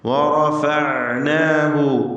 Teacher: റാഇന് തഫ്ഖീം കൊടുക്കുക, മറ്റക്ഷരങ്ങൾക്ക് തഫ്ഖീം വരരുത്